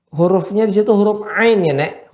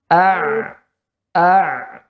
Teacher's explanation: Huruf ain itu dia mengalir sedikit.